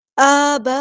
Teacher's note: آ پہ کھڑی زبر دکھ رہی ہوگی، ٹھیک ہے، تو ہم اسے 2 کاؤنٹ لمبا کریں گے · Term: مد بدل